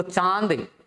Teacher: चांद शब्द का उच्चारण करते समय यदि नाक को बंद करके इसका उच्चारण करेंगे तो इसका उच्चारण शुद्ध उच्चारण नहीं होगा